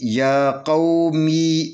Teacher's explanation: یا کھڑی زبر یا، اس کو 2 حرکت کے برابر کھینچ کر پڑھیں گے۔ یا قاف زبر با قو، می زر می، یا قومی، یا قومی نہیں پڑھنا، یا قومی پڑھیں گے، یا قومی۔